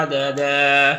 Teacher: यहाँ पर या मद्दा है और यहाँ पर 2 ज़बर है तो 1 ज़बर के साथ अलिफ पढ़ेंगे